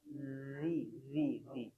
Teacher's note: Siratal ladzi zi ada getarannya.